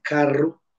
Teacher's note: la vibrante múltiple donde el ápice rote tres veces en los alveolos